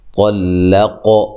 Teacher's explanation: ساکن کا اخفا مع الغنہ ہے، موٹا اخفا کرنا ہے، طلق، طا اور قاف کو موٹا ادا کرنا ہے، قاف پہ قلقلہ کرنا ہے